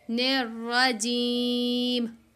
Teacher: जीम को खींचेंगे क्योंकि जीम में या मद्दा आ रही है तो इसको एक हर्फ अलिफ के बराबर खींच के पढ़ेंगे